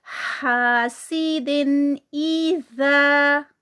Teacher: दिन को भी हम इजहार करेंगे, तनवीन है और उसके बाद हमज़ा आ गया है, तो यहाँ पर भी इजहार ही होगा